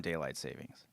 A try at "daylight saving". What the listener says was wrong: It's saving, actually. There's no S in it. It's like, it's saving, not savings.